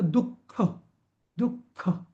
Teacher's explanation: जेव्हा विसर्गाच्या नंतर जेव्हा क आणि ख येतो तेव्हा त्या विसर्गाचं रूपांतर हे अर्ध्या ख मध्ये होतं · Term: जिव्हामूलीयम